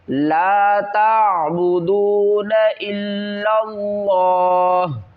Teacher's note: وقف کی صورت میں زبر کو ڈراپ کریں گے اور ہا کو ساکن پڑھیں گے، الا اللہ، لفظ اللہ کو موٹا پڑھیں گے۔